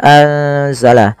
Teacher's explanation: harakat kemudian kita masuk lafal anzala sama sebagaimana tadi Um yaitu dibaca dengan bacaan Ikhfa nunnya disamarkan ke huruf z